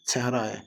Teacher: Əgər birinci sahit incədirsə, axıracan incə olmalıdır. Ə incədir, amma sonra gələn a qalındır.